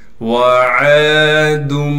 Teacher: وعاد واو کو بغیر کھینچے پڑھیں گے، عین کو 1 الف کی مقدار کھینچ کر پڑھنا ہے